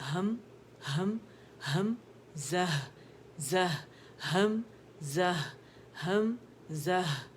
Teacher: دونوں ہا جو ہے نا وہ واضح ہونی چاہیے، جو اقصی الحلق سے ظاہر ادا ہو رہی ہے ایک ساکن کے ساتھ، اور ایک متحرک